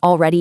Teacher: in fast everyday speech, we regularly drop the L even in words where it technically belongs